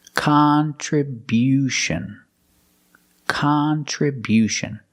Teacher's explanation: we change the stress to the first and third syllable